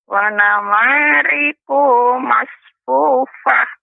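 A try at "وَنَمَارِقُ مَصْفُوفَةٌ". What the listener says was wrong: tidak boleh panjang, Nek. Ku dibaca dengan pendek. Wa namariqu masfufah.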